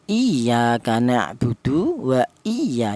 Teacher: lafal iya itu ditekan karena di situ ada ya bertasdid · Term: nabr